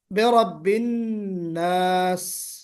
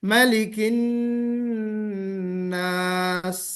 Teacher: सीन के अंदर सीटी होती है, सीटी बजनी चाहिए